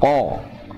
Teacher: huruf qa juga walaupun makhrajnya ada di pangkal lidah ya bersama huruf kaf, dia sama mempunyai sifat istilah.